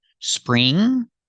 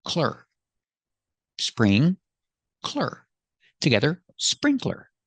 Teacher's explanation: It's sprinkler. Two syllables. Put the stress on the first syllable.